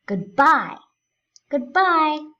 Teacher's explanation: We are stressing bye. We leave the first part of the word unstressed. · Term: iambic